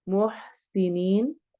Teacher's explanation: युहिब्बुल मुहसिनीन, युहिब, हा रूफ हलकी में से है, मुहसिनीन, सी सिटी वाला हर्फ, नीन में मद आरिद वक्फी हो रही है, इसको ज्यादा लंबा करके पढ़ेंगे